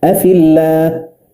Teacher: نجد هنا اللام في اسم الجلالة رققت لأنها سبقت بساكن وهو الياء مسبوق بكسر وهو الفاء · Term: مرققة